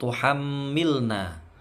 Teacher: mimnya bertasydid, bacaan gunnah, didengungkan sampai 3 harokat dengungnya